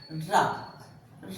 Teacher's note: जिस समय हम र का उच्चारण कर रहे होते हैं उस समय जो हमारी जीवा है वो ऊपर मध्य भाग का स्पर्श करती है और स्पर्श करने के साथ ही साथ वहां एक कंपन सा एक थरथराहट सी पैदा होती है। र जब जब आप उच्चारण करेंगे तो आप देखेंगे कि जीवा ऊपर स्पर्श करती है और साथ ही साथ में वहां एक कंपन पैदा होता है। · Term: लुंठित व्यंजन